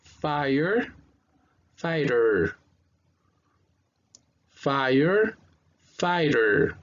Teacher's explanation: en inglés esta T es como una T muy bajita. Entonces, cuando suena, ¿no? Casi no se la escucha.